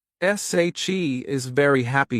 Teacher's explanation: If you stress she and happy, it sounds natural.